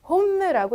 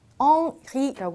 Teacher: 스펠링 자체는 H가 들어가 있지만 불어에서 H는 발음이 없어요. 절대로. 그래서 홈라고 읽지 않고 옴.